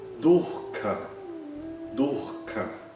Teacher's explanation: Nesse caso, a gente quase não nota a repetição da vogal U. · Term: Visarga